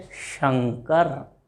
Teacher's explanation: वाक तंतु से लेकर जिह्वा के ऊपर वाला हिस्सा, ये कहलाता है तालु। तो वहां से उत्पन्न होता है श